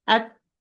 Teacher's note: it's a voiceless letter there is flow of air or flow of breath when I'm pronouncing the T